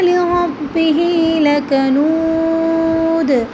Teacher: دال کے اوپر قلقلہ ہوگا، اس کے اوپر دوسری آواز نکالیں گے